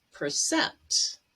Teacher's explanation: Cent has the stress, and there is an E between P and R.